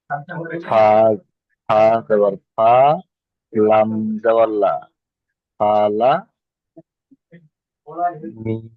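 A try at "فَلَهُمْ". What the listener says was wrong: এখানে হা আছে দেখেন, এটা হা, এটা হলো হা, আর এটা হলো মিম, তাহলে হা মিম।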